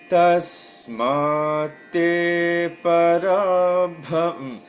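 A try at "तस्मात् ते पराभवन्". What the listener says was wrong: More holding on te. Tasmat te parabhavan.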